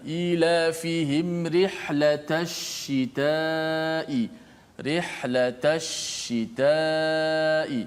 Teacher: Tafasyi martabat yang paling tinggi terjadi pada huruf shin yang musyaddadah.